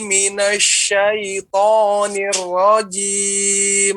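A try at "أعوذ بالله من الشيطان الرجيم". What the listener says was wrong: Ya, pada na itu tadi tidak dibuka. Makanya suara minash yang betul. A'udzu billahi mina. Masukkan ke shin. Minash. Harus dibuka singkat. Minash. Jangan dirapatkan minash. Tapi nash ya, langin.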